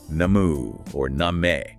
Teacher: In Chaucer's time, it was pronounced something like namu or name, with a long ah sound, like in father.